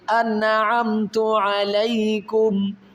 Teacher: یہاں پر نون ساکن ہے اور اس کے بعد حروف حلقی میں عین ہے، تو یہاں پر غنہ نہیں کریں گے، اظہار کریں گے